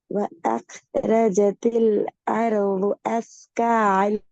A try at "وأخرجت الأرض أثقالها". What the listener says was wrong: கடைசி நிப்பாட்ட லஹா லஹா லஹா அப்படி நிப்பாடக்கூடாது. அஸ்கா நீட்டிங்க தானே? ஆ ஒரு செகண்ட் நீட்டிங்க தானே?